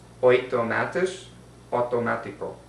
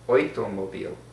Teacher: Words beginning with the Latin prefix auto are pronounced oito in Yiddish and auto in Spanish.